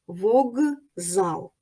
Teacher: ж навпаки спочатку глухий А потім дзвінкий як у слові вокзал к глухий з дзвінкий дзвінкий сильний він впливає на попередній глухий к і вимовляється як парний йому Ґ